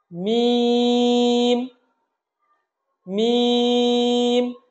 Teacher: মিম হরফটা আমরা বলবো ঠোঁটের শুকনা অংশ থেকে